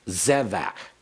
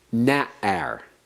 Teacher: Always accented on the first syllable. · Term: segolate noun